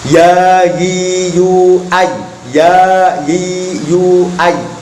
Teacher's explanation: Makhrajnya huruf ya adalah tengah lidah terkena tengah langit-langit. Tengah lidah terkena tengah langit-langit.